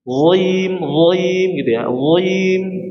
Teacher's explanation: Dan dia kategorinya adalah sifatnya apa? Itbaq, ya. Tebalnya sempurna.